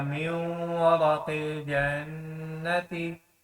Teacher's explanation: ہم نے میم کو واو کے ساتھ ملانا ہے لیکن غنہ بھی کرنا ہے